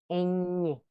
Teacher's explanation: Representa el fonema consonántico nasal palatal ñ, es decir, uso de nariz y paladar. Procede de la palatización de varios grupos consonánticos latinos representados en el castellano antiguo como MN, NN y la NY.